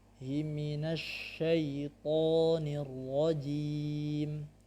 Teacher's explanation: Shin memiliki sifat namanya rakhwah. Biarkan dia mengalir dulu.